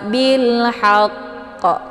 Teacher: setiap huruf qalqalaf itu ada bunyi pantulannya ya jadi ee dipantul karena hurufnya terletak di akhir kalimat maka sudah jelas pantulannya itu lebih kuat